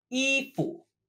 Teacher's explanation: the fu is normally pronounced with a rising tone. However, in this word, it loses its tone